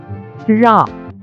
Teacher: நாவின் நுனி மேல் நோக்கி வளைந்து வருடுவதால் ழகரம் தோன்றும். ழா தமிழுக்கு உரித்தான சிறப்பு ஒலி. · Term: சிறப்பு ழகரம்